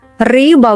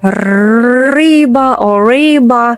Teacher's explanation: The Russian r is short, clean and sharp, like tapping your tongue once or twice.